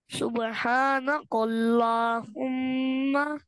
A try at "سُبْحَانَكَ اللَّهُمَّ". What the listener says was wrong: काफ को बारीक पढ़े, देखिए आपने पढ़ लिया ना, कौफ, काफ। सुबहानका छोटा वाला काफ है, कौफ मोटा वाला नहीं है, तो उसको काफ को बारीक पढ़ना है। सुबहानकल, सुबहानकल नहीं, सुबहानकल्लाह, कल्लाह। सुबहानक अल्लाहुम्मा।